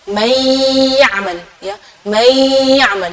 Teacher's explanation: nunnya tidak jelas tapi ada suara dengung ghunahnya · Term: idgham bhunah, idgham bi gunnah